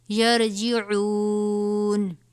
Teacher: یا را زبر یر، یہ را سے پہلے زبر ہے، اس را کو بھی پر پڑھا جائے گا